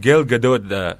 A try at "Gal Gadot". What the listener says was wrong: Gal Gadot. No T. Gado.